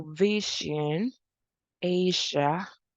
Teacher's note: that is a voiced palatal fricative